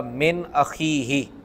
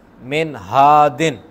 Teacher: اور ان کی مثال آپ لے لیں، جس طرح من اخیہ، نون ساکن کے بعد حمزہ آیا ہے، من اخیہ، اس میں غنہ نہیں ہوگا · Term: حروف حلقی